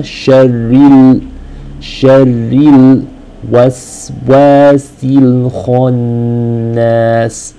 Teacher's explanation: Make sure the lam here is very clear. You don't want the lam sakina to disappear. So make sure you're actually hitting the makhraj of the lam with the sakina.